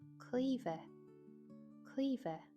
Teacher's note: MH in Irish usually sounds like a V